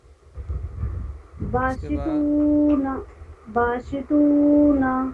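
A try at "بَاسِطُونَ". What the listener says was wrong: باشی نہیں، باسیتونا. سین ہے تو سین ہی پڑھیں گے، ٹھیک ہے نا.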